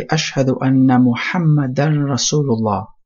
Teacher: You see how the dal and the ra, you make idgham, so you join them on.